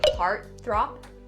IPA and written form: ˈhɑːrt θrɑːp (heartthrob)